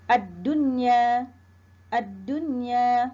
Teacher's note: dibaca dengan terang dan nyata tidak berdengung jelas saja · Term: izhar mutlak